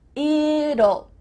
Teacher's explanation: when we say the contraction it will, we kind of add a little U sound before the L. It kind of sounds like U-L-L.